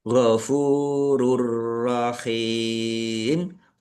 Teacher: Domah tanwin bertemu dengan huruf ro, bacaan idgham bila gunnah, masuk dengan tidak mendengung, yaitu langsung masuk ke huruf ro, tanwinnya tidak dibaca tetapi tidak mendengung, ditandai roknya ada tasdidnya, roknya dibaca double.